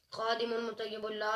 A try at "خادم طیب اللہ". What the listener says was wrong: خادم طیب اللہ خادم مطیب اللہ نہیں ہے میم نہیں طیب اللہ